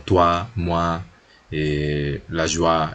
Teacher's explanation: Ese UA va a ser como una W del inglés, ¿no? UA, y es una semiconsonante o una semivocal.